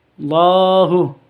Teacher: Allahu lafdul jalalah ini pasti panjang ya lafdul jalalah pasti panjang Allahu panjangnya dua harakat